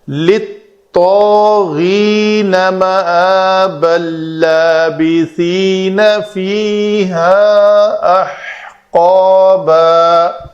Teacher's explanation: تنوین کے بعد لام ہے تو اس کا ادغام کامل ہو جائے گا، تنوین کا نون پڑھنے میں بالکل باقی نہیں رہے گا، اس لیے اس لام کے اوپر ایک شد لکھنے میں ملتی ہے ہمیں۔